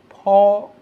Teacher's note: which is like the English p in bad, but released with more force